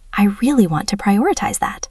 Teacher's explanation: Notice the stress on want and prioritize.